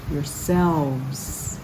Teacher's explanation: The V-E-S at the end is voiced